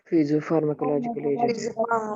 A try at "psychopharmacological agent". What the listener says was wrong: It is not physios. Psychopharmacological psychosis, like that. P silent है तिथं pronunciation. During the pronunciation, it is as psychosis or psychopharmacological agent.